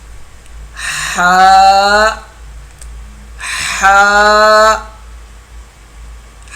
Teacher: حلق کے بیج والے حصے سے ہا ادا ہوگا. حلق کے درمیان سے ہا اور عین دو حرف ادا ہوتے ہیں، ہا اور عین.